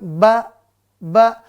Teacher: makhrajnya tempat keluarnya adalah merapatkan kedua bibir Ya rapat tapi kalau ngomong ba maka dia rapat ba ba